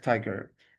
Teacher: trochaic, stressed, unstressed like tiger